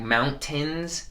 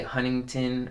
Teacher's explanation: i've heard californians don't pronounce their t's